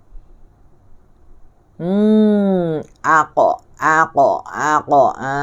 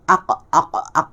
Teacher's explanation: Suara pun tertahan. Dia syiddah. Sebab dia qalqalah. Aq. Tak keluar sini. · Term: huruf qaf